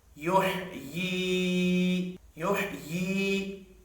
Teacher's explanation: یا مدہ ہے، 1 الف کے برابر کھینچ کر پڑھیں گے